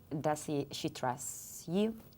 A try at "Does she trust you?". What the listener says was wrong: ¿Y la segunda T de trust dónde está?